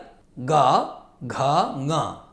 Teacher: तृतीयचतुर्थपञ्चमाः सानुस्वार अन्तस्थ हकाराः संवृतकण्ठाः नादानुप्रदानाः घोषवन्तः